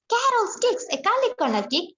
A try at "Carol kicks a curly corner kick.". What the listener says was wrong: Kick না, kick. Carol kicks a curly corner kick। খ হয়ে আসবে।